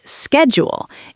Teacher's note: It starts with a K sound, S K, schedule.